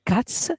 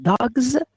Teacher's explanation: it's not always pronounced as S, but it might be pronounced S in cats. It might be pronounced as Z in dogs.